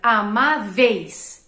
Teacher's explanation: Eu tenho uma vogal e uma semivogal na mesma sílaba, então é um ditongo